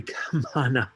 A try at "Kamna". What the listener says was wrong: It's actually Kamna. The middle A is silent. It's like, yeah, Kamna, like Kamala, but Kamana.